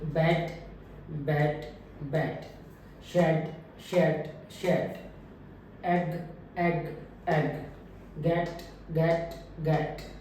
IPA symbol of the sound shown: e